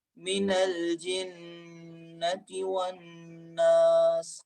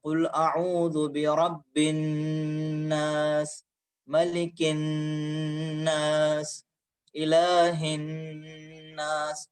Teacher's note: جہاں کے اوپر نون مشدد ہے، یعنی وہ نون کی جس کے اوپر علامت تشدید لگی ہوئی ہے، وہاں پر ہم نے غنّے کا استعمال کیا ہے